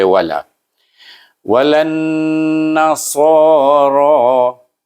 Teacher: ra di atas ra, baca dengan tebal, baris atas ra